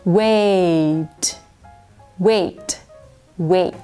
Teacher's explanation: ดังนั้นมันจะลงที่ a ก่อนให้ทุกคนพูดเป็น a แล้วค่อยปิดปากขึ้นมาเป็นตัวทีค่ะ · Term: สระสองเสียง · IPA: /weɪt/